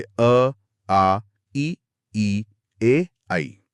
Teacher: अ वृत्त मुखी जिनमें होठ गोल नहीं होते